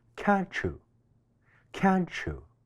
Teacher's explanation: ▁not▁this▁chicken.▁I'm▁so▁sorry.▁I'll▁check▁with▁the▁main▁kitchen▁and▁fix▁this▁for▁you.仲有一個喺連貫話語當中會出現嘅現象，叫語音融合▁（coalescence）。呢個現象通常會出現喺兩個單詞中間，第一個單詞尾音係▁t▁或者▁d，▁而緊接住▁u▁呢一個單詞▁，u▁嘅詞首有▁y▁呢一個音，兩個單詞連讀嘅時候，呢兩個音就會融合成一個全新嘅音。例如▁can't▁you▁會變成▁can't▁you， can't▁嘅▁t▁會結合▁u▁嘅▁y，▁成為一個新嘅音▁ch